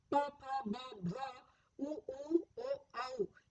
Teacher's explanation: ये मुख के ओष्ठ्य प्रदेश से बोले जाते हैं